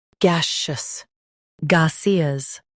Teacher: ga see us gaseous ga see us gaseous Stress gay and soften shus.